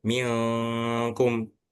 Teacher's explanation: nunnya samar. Sudah masuk dengan kafnya dulu. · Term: Ikhfa